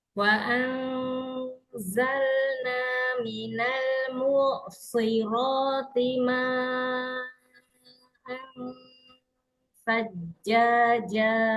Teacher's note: Shot yang kasroh walaupun dia tingkatan tafkhim yang terakhir, huruf shod tetap ditampakkan ketebalannya ya, istilahnya biar nggak kayak huruf sin